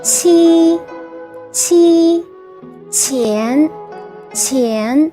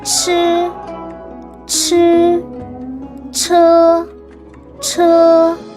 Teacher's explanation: Q has the soft sound of CH and followed also by the vowel I, like the word cheese in English, whereas CH has the hard sound like chat.